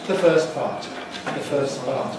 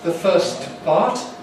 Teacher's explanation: when we have a word like <first> [fɜːst] and the next word begins with a consonant, we very frequently drop the /t/ sound. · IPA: [ðə ˈfɜːs ˈpɑːt]